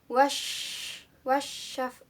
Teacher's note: Pada ayat ketiga di sini ada hukum bacaan asyamsiyah karena ada huruf alif lam bertemu dengan shin. Jadi cara bacanya harus dimasukkan atau ditasydidkan.